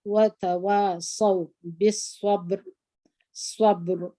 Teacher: دغه ته کوچنۍ قلقله وایي دلته مو د با قلقله وکړه